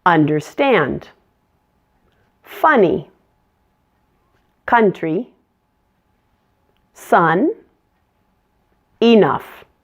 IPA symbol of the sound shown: ʌ